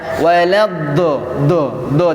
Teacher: Huruf do tidak ada nafas ya. Do tidak seperti do, kan ada nafas.